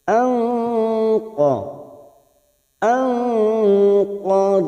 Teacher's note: Ada nun sukun bertemu qaf, ikhfa hakiki kita samarkan bunyi nun sukun. Nun sukun atau tanwin yang bertemu dengan 15 huruf ini, perhatikan, bisa diingat-ingat 15 huruf ini, maka kita samarkan selama 3 harokat atau 2.